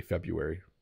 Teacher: we just decided it was too hard to say the R so we say February